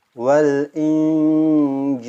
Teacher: Jadi suaranya itu keluar di tengah lidah. Fokuskan huruf nunnya atau tanwinnya di sini.